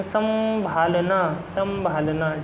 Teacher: बोलने पर लग रहा है कि नाक से भी आवाज आ रही है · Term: अनुनासिकता